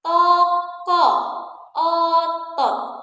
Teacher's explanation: kita punya bunyi vokal O madya bawah belakang.